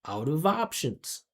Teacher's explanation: No separation. You don't hear any gaps, or you can't hear where each one word starts and one word stops. It's all one sound connected.